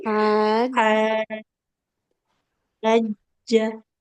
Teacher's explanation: Nah, sudah bagus tapi hanya sedikit di haja. H-nya enam harakat, jimnya enggak boleh panjang.